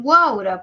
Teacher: encontramos un triptongo porque está la cerrada abierta cerrada